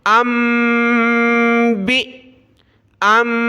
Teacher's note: हमज़ा को मीम के साथ मिलाया, नाक में आवाज़ पैदा करेंगे